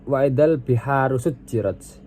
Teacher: Kemudian ada sujjirat. Sujjirat situ dibaca qalqalah sugro karena jimnya dibaca memantul ringan.